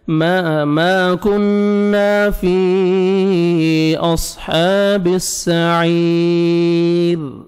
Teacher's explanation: last میں را ساکن ہو جائے گا جب سٹاپ کریں گے, اور را ساکن سے پہلے یا ہے, آپ نے را کو باریک کرنا ہے